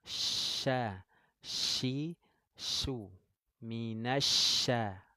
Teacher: Jadi huruf shin keluarnya dari tengah lidah sifatnya at-tafashi.